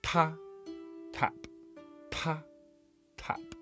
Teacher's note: Ta, tap, ta, tap. Now you should feel more air coming out when you say the Chinese ta. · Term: aspiration